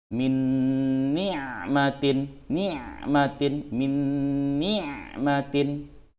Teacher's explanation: Berarti ini hukumnya idgham bi gunnah. Nun sukun bertemu nun. Cara membacanya dengung.